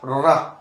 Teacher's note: दंत मूल, तो दांत के जो मसूड़ा है उससे टकरा के हवा निकलती है, तो रा, देखिए मसूड़े से जीभ टकरा रही है, तो क्या बोलेंगे, दंत मूल वाले पार्ट से इसका उच्चारण किया जाता है, दंत मूल।